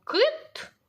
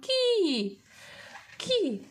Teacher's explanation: там було кит тверде к а тут кі м'ягко кажемо кі кі к приголосне м'ягке нам треба поставити дві рисочки Ось